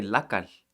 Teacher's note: It's more of a shl kind of slushy L sound.